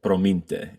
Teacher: they have this like the standard rolled R